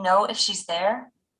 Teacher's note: notice how the speaker uses Rising intonation on the part of the sentence shown in blue okay are